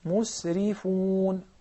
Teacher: Why the ra is so thin? Because it has kasra. The ra with kasra or with there is permanently thin.